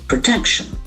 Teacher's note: the accent falls to the second syllable